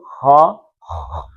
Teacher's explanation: خا میں تھوڑا سا یہ تالو والے اندر تھوڑی رگڑ آ جاتی ہے، ہا، ہا، خا اوپر سے.